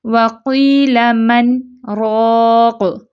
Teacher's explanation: وَقِيلَ مَنْ رَاقٍ، یعنی کہ ہم سانس نہیں توڑتے، اسمال پاز یعنی کہ مختصر سا وقفہ لیتے ہیں، اس کے بعد پھر ہم کنٹینیو کرتے ہیں۔ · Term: سکتہ